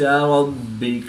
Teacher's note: با بھی حروف قلقلہ میں سے ہے اور یہ مشدد ہے تو یہاں پر ہم قلقلہ کبریٰ کر کے پڑھیں گے